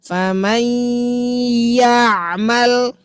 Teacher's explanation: Bunyikan bunyi dengungnya, seret huruf ya-nya. Karena kan kita ingin meleburkan, tapi tidak menghilangkan dengungan. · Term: idgham